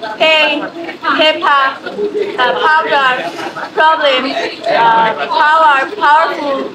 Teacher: পিতে দুই ঠোঁট মিশবে, একটু ডিপলি হবে, জোর দিয়ে হবে।